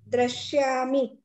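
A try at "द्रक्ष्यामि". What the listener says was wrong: But you have to pronounce ksha. You are pronouncing only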